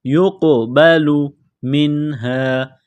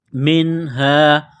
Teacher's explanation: نون ساکن کے بعد ہا ہے، حروف حلقی ہے تو نون ساکن پر غنہ نہیں کریں گے